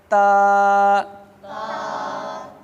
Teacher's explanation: یہ زبان کی نوک اور اوپر کے دانتوں کی جڑ سے ادا ہوتی ہے